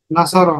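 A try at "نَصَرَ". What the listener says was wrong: না স বললে কিন্তু এখানে লম্বা হয়ে গেল, ভুল হয়ে যাবে। বলতে হবে নুন জবর না, সদ জবর স, র জবর র, নাসর। কারণ আমরা কি বলেছিলাম হরকতের উচ্চারণ কিভাবে করতে হয়? তাড়াতাড়ি করতে হয় না?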